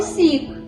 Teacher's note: с м'який приголосний тому що після нього стоїть звук і